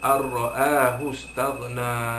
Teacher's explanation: Idgham bila gunnah, memasukkan bunyi nun ke dalam huruf ra tanpa dengung. Jadi dia tak ada nun mati situ dah, dia terus macam sabdu.